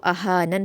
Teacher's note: अहानन में आपको ध्यान देना है कि हमज़ा पर हरकत है उसको नहीं खींचेंगे ज़रा भी, और हा पर अलिफ मद्दा है तो उसको दो हरकत खींच कर पढ़ेंगे और नून को नून में मिला देंगे, क्योंकि नून की जो ज़ेर है, लास्ट वाले नून की ज़ेर, वो जज़्म में बदल जाएगी वक्फ़ करते हुए, तो इसको अहानन पढ़ा जाएगा।